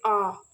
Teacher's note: तो ये जो आ है, आ मैं तो भूल गया, ये होगा विवृत स्वर। पूरा मुख खुलता है, इसमें आपका पूरा मुख खुलेगा जब आप कहोगे आ